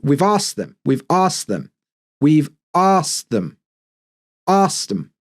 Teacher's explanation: But you'll notice the K in asked kind of disappears a little bit. And it kind of links to we've asked them, we've asked them, we've asked them, asked them.